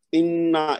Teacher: نون کی آواز ناک میں جائے گی اور پھر زور دے کے پڑھے گی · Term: غنہ